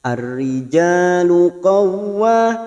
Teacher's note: masuk pada huruf waw yang bertasdid, hanya masuk tanpa ditahan lama-lama